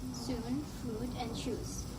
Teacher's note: The height of the tongue is high, and the part involved of the tongue is the back part. The lips tend to be rounded, which means that it resembles more to a pout shape.